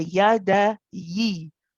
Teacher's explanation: the kasra always, or the zir, it makes an e sound, not an a sound